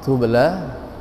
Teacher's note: Tubla qalqalah sughra karena huruf ba terletak di tengah kalimat tubla.